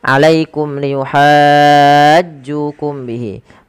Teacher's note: mim mati yang pertama kita perjelas karena dia ada izhar syafawi yang di mana suara mimnya harus diperjelas